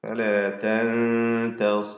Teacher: സ്വാദിൻ്റെ തഫ്ഹീം കുറഞ്ഞതാണ് കസ്രായതുകൊണ്ട്